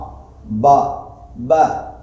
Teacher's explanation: ப அப்படிங்கிறது 2 உதடுகளிலிருந்து வெளியாகிறது. அதற்கு பின்னால் இருக்கக்கூடிய அலிஃபை நாம் வெளியாக்க வேண்டும் என்று சொன்னால் வாயை திறந்தா போதும்.